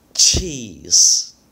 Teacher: those are all examples of aspirated consonants because you're blowing air out of your mouth when you make those sounds